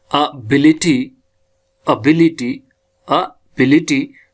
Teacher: तो हमारी जो प्राइमरी एक्सेंट लगनी है सेकंड सिलेबल पे